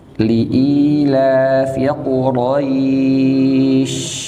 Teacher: Sya-nya juga jangan langsung berhenti tapi harus dialirkan sedikit. Ish, itu agak lama sedikit ya.